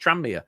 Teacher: the N and the M kind of blur into one. Tranmere.